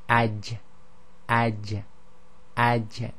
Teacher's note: So normally with the vowels it would be ja, ji, ju, but with the sakin it's aj, aj, aj. So it's a strong stoppage with the echo. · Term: jim